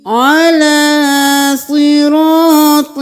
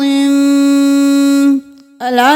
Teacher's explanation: عین کو گلے کے درمیان سے نکالنا ہے، عین زبر لام کے اوپر کھڑی زبر ہے، 1 الف کے برابر کھینچیں گے۔